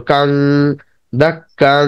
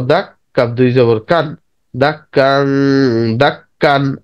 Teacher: নুনের জায়গায় উচ্চারণটা হবে অনিস্বর বা এন জি এর মতো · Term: গুণনা